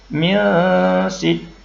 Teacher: Jadi ada dengung sedikit dan bunyinya samar-samar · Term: ikhfa